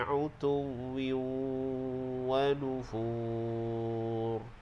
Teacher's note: Baik, bila kita waqaf pada wanufur, bila waqaf jadi hukum mad arid li sukun, maka dipanjangkan dengan kadar 2, 4 atau 6 harkat. Dan ra di hujung kita waqaf dengan tebal